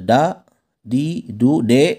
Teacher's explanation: terletak pada kulit gusi bagian atas dimana dari ujung lidah menepati dengan pangkal gigi seri atas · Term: huruf da